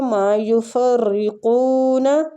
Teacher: را کسرہ کی وجہ سے باریک پڑی جائے گی. قو وہ مد کی وجہ سے کھینچا جائے گا.